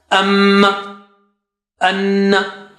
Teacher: you have to stretch it twice with your nose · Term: gunna